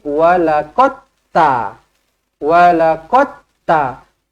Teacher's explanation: dia akan jadi walaqat ta walaqotta Dal ni hilang terus dah Dal ni hilang terus sebab apa dia dia dah dimasukkan ke dalam ta